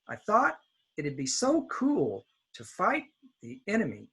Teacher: Now notice the word I, it'd be, to, and the is very low.